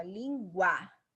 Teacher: Então a A é a vogal, o U é semivogal, que é a mais fraca